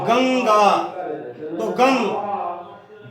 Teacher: जैसे कहते हैं गंगा, तो गंग, जो गा में अंग की मात्रा आई है वो हमारी नासिका से गूंजती है, उसकी जो ध्वनि आती है, जो आवाज निकलती है, तो वो नासिका में गूंजती है। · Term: अनुस्वार